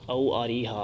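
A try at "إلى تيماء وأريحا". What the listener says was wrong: او نہیں، الا تیما نہیں، تیما اور اریحا کی طرف.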